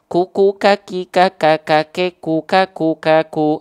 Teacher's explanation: Salah satu sifat yang dimiliki oleh huruf Kaf adalah hams secara dasar hams ini artinya mengalir nafas hams ini artinya adalah